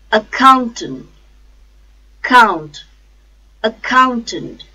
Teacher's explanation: accountant accountant a four syllable count second syllable and third syllable the stress is on second syllable count